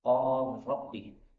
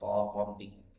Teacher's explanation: la ketemu ra ini boleh idgham seperti biasa